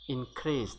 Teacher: This SE is not pronounced as za, rather it is pronounced as sa